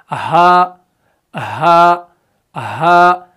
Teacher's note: अब हा का जो मखरज है, यानी हा की जो अदायगी है, वो भी अक्साई हलक से है, यानी हलक के निचले वाले हिस्से से जो है हा भी अदा होता है। जब आप हा को पढ़ते हैं ना, तो हा को पढ़ते समय क्या होता है कि आपका जो निचला वाला ये पोर्शन है, यानी हलक का जो निचला वाला साइड है, ये तमाम, ये पूरा का पूरा जो है वाइब्रेट होने लगता है।